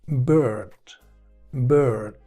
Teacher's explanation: Fijaos que no estoy pronunciando ya la I ni como una I breve ni como un I, sino como una E larga.